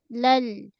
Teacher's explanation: Pada huruf lam jelaskan lam mengalir sedikit lal. Kemudian ha.